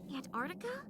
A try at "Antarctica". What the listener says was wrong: That's not how you pronounce it. It's Antarctica. You can pronounce the T's. It's not Antarctica, it's Antarctica.